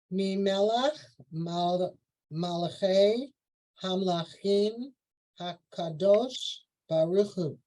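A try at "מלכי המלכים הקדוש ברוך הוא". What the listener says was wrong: There you go.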